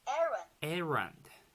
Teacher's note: the stress is in the first syllable